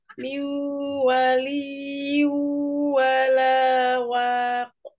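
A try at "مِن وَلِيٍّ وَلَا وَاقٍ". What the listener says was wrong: Wow-nya dimajukan, bibirnya ya, dimonyongkan karena makhraj ya dari huruf wow ini monyong ya, monyong. Miu dimonyongkan ya, monyongkan bibirnya. Jadi beda dia bunyinya ketika kita monyongkan dengan tidak. Kalau seperti ini yang Antuna dengar, kira-kira Anda monyongkan nggak bibirnya?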